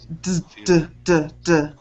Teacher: D sound, d, d, d, d. If you put your hand on your throat, d, d, you should feel vibration.